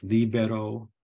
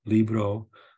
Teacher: we get an inserted vowel in a word like libero book where Italian has Libro